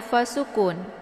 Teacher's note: Kemudian taf'a, di sini ada fa sukun. Ya, fa sukun adalah sifatnya hamas, jadi ada desis anginnya